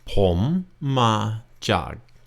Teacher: Pom and chan are rising tones. Ma, a flat tone, and jag, low tone.